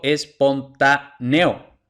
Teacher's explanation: pronuncio eo en una sola sílaba lo pronunció como diptongo · Pero según las reglas que hemos visto, siempre nos hace falta una vocal cerrada para que tengamos un diptongo. Entonces, E es una vocal abierta, O es una vocal abierta, entonces teóricamente es hiato, aunque yo lo pronuncie en una sola sílaba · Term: falsos diptongos